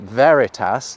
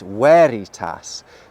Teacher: any classical Latin words that look like they have a /v/ actually had a /w/ sound